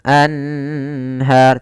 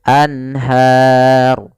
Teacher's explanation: Kemudian pelafal anharu di sini ada bacaan izhar halqi yaitu adanya nun sukun bertemu dengan huruf ha. Yaitu suara nunnya harus jelas tidak boleh ditahan